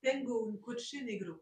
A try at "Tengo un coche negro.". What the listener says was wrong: Très bien,